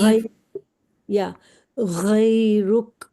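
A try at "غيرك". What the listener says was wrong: ہاں ٹھیک ہے الحمدللہ، بٹ یہ آپ کا تھوڑا سا لمبا ہو رہا ہے.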